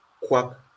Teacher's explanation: And then we have a labialized form of the K sound